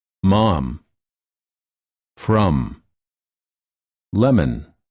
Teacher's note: them m m spelled with the letter m mom from lemon for this sound the lips are together and the air flows out of the nose